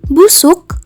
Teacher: kata tertutup karena setelah fonem uh ditemukan konsonan yang menghalanginya jadi fonem uh pada kata busuk dibaca tidak lepas · bunyi U langsung tergeser oleh alat ucap menuju bunyi velar sehingga bunyi U menyatu dengan bunyi K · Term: suku kata tertutup